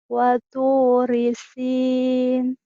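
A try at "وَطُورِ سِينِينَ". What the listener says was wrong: Nin. Ninnya ketinggalan. Ya lagi.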